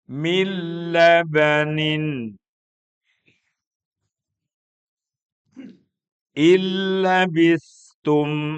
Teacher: bila ghunah artinya tanpa suara sengau. Tanpa ada suara sengau. Tidak ada dengungan. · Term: idgham bila ghunah